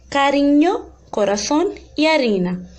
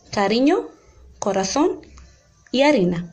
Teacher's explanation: É como se a língua tocasse no céu da boca uma vez só. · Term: som vibrante